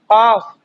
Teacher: जो जुबान का आखिरी हिस्सा है वहीं से ज्यादा होता है